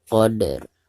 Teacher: Jadi apabila diwakafkan maka huruf ro-nya itu harus disukunkan. Jadi pertama kita qalqalahkan huruf dalnya lalu diikuti dengan suara ro sukun.